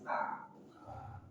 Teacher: Ujung lidah dari permukaan atasnya bertemu dengan gusi gigi seri atas ta. Dan dia tarkib tipis, bukan ta, tapi ta, ringan ta. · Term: huruf ta